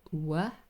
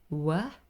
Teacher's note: the sound is produced with both lips rounded not closed W have a look my lips are rounded W but also